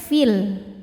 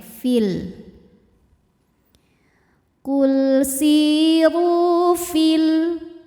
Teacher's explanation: namun jika diteruskan maka Jadi pendek fil gugur madnya namanya Takus Bil hadfi Kenapa bisa gugur karena di sini ada